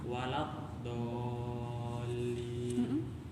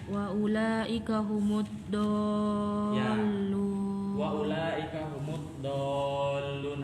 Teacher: Yang panjang dibaca panjang dulu kemudian langsung tasjid setelahnya. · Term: mat lazim